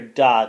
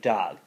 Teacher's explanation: So the example here is the word dog is produced as dod, because that front d kind of overtakes the back g, and it's more easily produced when you're saying the word, and therefore you hear dod instead of dog. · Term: consonant harmony